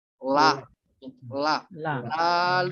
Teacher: huruf La ini makrajnya adalah ujung lidah menyentuh gusi bagian dalam